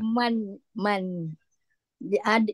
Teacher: jadi dia izhar halq lah Hm okey cara bacaan okey so bacanya kena terang dan nyata tak boleh lama-lama dan tak boleh ada dengung